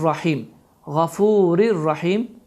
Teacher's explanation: Deməli, idğam bilağunə qaydası baş verir ki, n səsi tamamilə oxunmur, ra hərfi isə şəddələnir.